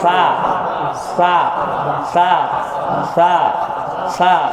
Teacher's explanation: সা পাতলা, জিহ্বার আগা সামনের দাঁতের আগার সাথে লাগবে।